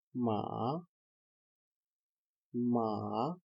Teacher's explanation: Second tone is rising tone 3 to 5. We can call it 3-5.